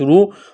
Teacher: را کے اوپر پیش ہے، را کو موٹا کرنا ہے، واو ساکن سے پہلے پیش ہے، واو مدہ ہے، 1 الف کے برابر کھینچنا ہے۔